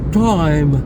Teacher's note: Le i est suivi d'une seule consonne. Il est donc long et donc il est diphtongué.